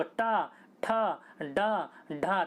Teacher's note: जीभ देखिए आपकी फोल्ड होकर पीछे वाले हिस्से से टकरा रही होगी, तो पीछे वाले हिस्से से टकराएगी तो क्या कहलाएगा, मूर्धन्य कहलाएगा।